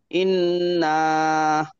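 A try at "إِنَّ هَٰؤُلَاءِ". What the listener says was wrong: না টানে, ইন্নাহা, না তো টান দেবেন না।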